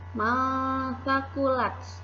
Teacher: nun sukun bertemu dengan huruf sa, maka nun sukunnya dibaca samar-samar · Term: ikhfa